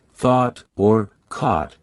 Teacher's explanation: Round your vowels. British RP tends to have rounded vowels especially in words like thought or caught which are pronounced with a rounded sound.